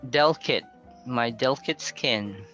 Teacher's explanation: Then you can remove the short sound instead. So instead of 3 syllables, you can read that using 2 syllables only.